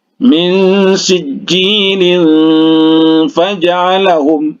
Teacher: Kemudian sama dengan ini juga, ya, kalau diwasolkan ini tanwin bertemu dengan huruf fa. Fa ini adalah salah satu huruf ikhfa. Jadi didengungkan.